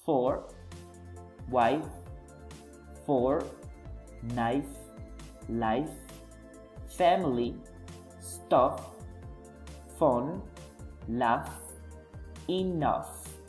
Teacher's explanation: the sound is voiceless because there is not a vibration when we produce the sound, and on the contrary, the sound is voiced because it vibrates when we produce the sound.